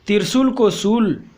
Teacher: अक्षर लोप का पहला आदि अक्षर लोप। आदि अक्षर लोप में त्रिशूल को शूल, इसमें आदि का लोप हो गया है।